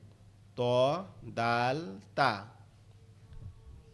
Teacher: জিহ্বার আগা সামনের দুই দাঁতের গোড়ার সঙ্গে লাগবে